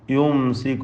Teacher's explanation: യുംസികു സാക്കിന മീം വീണ്ടും ഇൽഹാർ ഷഫവി മണിക്കരുത് വെളിവാക്കണം